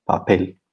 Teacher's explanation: we have a word that ends in L and the stress is on the last syllable. So this is a regular word.